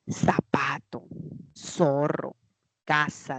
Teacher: Nosotros lo pronunciamos como si fuese una S, pero es por el ceseo. Lo que le corresponde en el plano fonológico es la interdental, o sea, con este símbolo, ¿no?